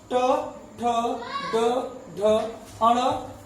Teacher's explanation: क वर्ग का उच्चारण कंठ से होता है, च वर्ग का उच्चारण तालु से होता है, और ट वर्ग का उच्चारण मूर्धा से होता है